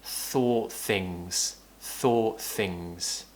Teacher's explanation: Sometimes when we have words which end with T, it will be quite difficult to then pronounce a TH at the beginning of the next word. So we'll drop that T and just pronounce the TH to kind of join the words together.